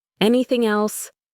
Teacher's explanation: The G at the end of anything almost disappears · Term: linking